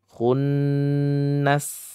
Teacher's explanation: gunnah musyaddadah yang sedikit panjang 2-3 harokat ya. Maksudnya gunnahnya, nasnya ini tidak boleh panjang.